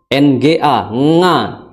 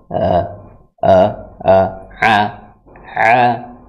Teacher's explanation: ain itu makhrajnya adalah di tenggorokan yang tengah, ya, tenggorokan yang tengah, ya, a, ya.